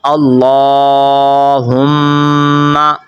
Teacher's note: میم کے اوپر آپ نے غنہ کرنا ہے، کیونکہ میم مشدد پر ہمیشہ غنہ ہوتا ہے۔